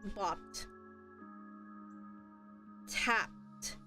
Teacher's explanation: notice the Ed D is pronounced as a t sound